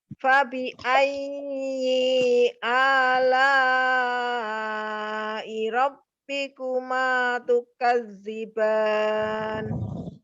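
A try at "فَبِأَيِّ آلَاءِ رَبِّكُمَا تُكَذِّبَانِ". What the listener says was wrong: Ya, pada saat pengucapan ayyi, ya-nya kan ditekan ya karena dia bertasdid, tapi nya tidak panjang ya. Atau tidak juga dijedah, i-nya dipisah dari a ya. Tapi langsung ya karena dia y-nya pendek ya. Tidak ada tanda panjang, hanya untuk ditekan karena ya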